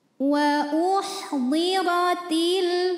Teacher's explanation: maka cara bacanya ditebalkan pangkal lidah kita dinaikkan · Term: tafkhim